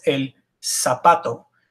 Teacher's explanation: Z's are pronounced just like S's, no difference. No matter where the Z is, it's always an S.